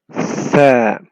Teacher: You cannot say Sa, but you say Tha. The Tha comes out when the tip of the tongue touches the edge of the top two front teeth. So the tip of your tongue comes out between your teeth.